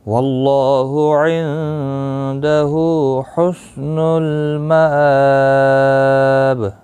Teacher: حسن المآب، مآب حمزہ کے اوپر کھڑی زبر ہے، ایک الف کی مقدار کے برابر کھینچ کر پڑھا جائے گا، اور با وقف کی صورت میں با ساکن پڑھا جائے گا، اس کے اوپر قلقلہ بھی ہوگا۔